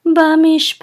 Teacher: This is a revi'i, and so with this revi'i we know that the accent is on the last syllable, pat. And revi'i says, revi'i.